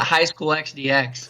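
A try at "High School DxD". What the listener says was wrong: That is not how you pronounce that. You don't pronounce the X. So it's High School Double D.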